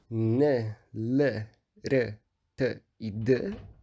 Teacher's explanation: Então, esses sons n, l, r, t e d são apicoalveolares. Eles são todos alveolares, dessa região logo atrás dos dentes, e eles são apicais. Significa que eles usam o ápice da língua, a ponta da língua. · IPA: [n l ɾ t d]